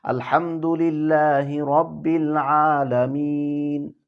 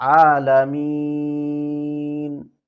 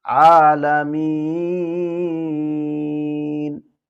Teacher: উপর জবর আছে এখানে আমরা তিনটা নিয়মে থামতে পারি কসর তাওয়াসুতুল আমরা সেখানে গিয়ে এক আলিফ করেও থামতে পারি দুই আলিফ করেও থামতে পারি তিন আলিফ মদ করেও আমরা থামতে পারি যেমন আলহামদুলিল্লাহি রাব্বিল আলামিন এক আলিফ আলামিন দুই আলিফ আলামিন তিন